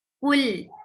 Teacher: for dhamma, circle your lips. Kaf is a light letter and attach it with lam.